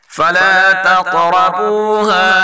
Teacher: قاف اور را دونوں کو پر پڑھیں گے اور قاف میں قلقلہ بھی کریں گے